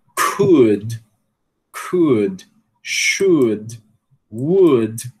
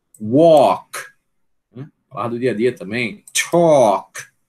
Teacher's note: A gente não deve pronunciar o L, né? Esse L aqui, nessas palavras, veja que é um monte de palavras do dia a dia, né?